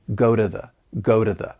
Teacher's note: You hear that flap t along with that reduced sound. · that T, it comes between two vowel sounds, so I'm going to pronounce it as a flat T